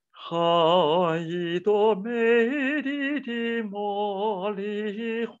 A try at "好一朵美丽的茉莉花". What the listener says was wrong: 不 能 是 花 ， 又 掉 了 。